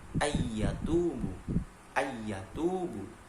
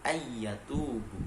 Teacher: Maka nunnya tidak begitu dianggap, langsung masuk ke dalam ya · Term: idgham bi gunnah